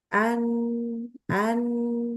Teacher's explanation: makhljnya itu adalah ujung lidah ketemu dengan ujung langit-langit tapi bukan busi jadi langit-langit yang paling depan